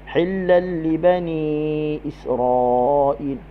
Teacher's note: Idgham bila gunnah. Masukkan tanwin ke dalam lam tanpa dengun